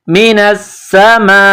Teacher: من السماء نون سین زبر نس سین زبر سا من الس میم الف مد زبر ما یہ لمبی مد ہے، 4 الف کی لمٹ میں اس کو کھینچنا ہے